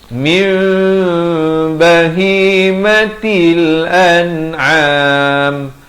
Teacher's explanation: Asalnya min, tapi bila datang ba ditukarkan bunyi nun kepada bunyi mim dengan kadar dua harakat. Bibir sekadar bersentuhan atau hampir bersentuhan, kedua-duanya betul. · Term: iqlab